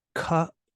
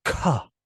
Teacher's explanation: out is not that much air but Ka is it's now you're just really emphasizing the sound with extra air coming up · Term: aspiration